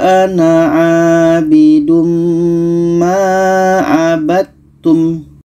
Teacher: Abattum, dal kita masukkan ke ta, tidak jadi qalqalahnya. · Dal ini ada Qalqalah sedangkan Ta ini bukan Qalqalah sifatnya maka Dal yang asalnya hukum Qalqalah tidak jadi kita masukkan ke ta kita baca walaaidum Ma abum Dal kita masukkan ke ta Tidak